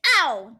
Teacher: This is the fourth and last tone. It goes downward, very, very quick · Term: fourth tone